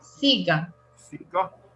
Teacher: la palabra siga, el estrés, el acento está en la primera sílaba.